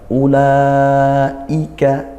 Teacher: i-nya tetap dikuatkan karena hamzah itu syiddah sifatnya. Tadi bukan ulaika, nah itu seperti tasil, ya, diringankan, tidak, tapi kita baca tetap kuat syiddah.